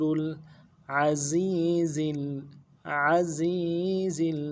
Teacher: عین کو موٹا ادا کرنا ہے